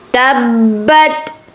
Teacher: با مشدد ہے اس لیے آپ نے اس کو رک کر سختی سے ادا کرنا ہے